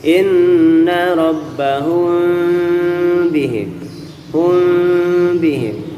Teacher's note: Ikhfa syafawi tidak mangap, tidak rapet, tapi di tengah saya mangap dikit ya, sehingga bunyinya bukan mim, bukan ang ya, bukan rabbahum bihim, bukan rabbahum bihim, tapi di tengahnya aja.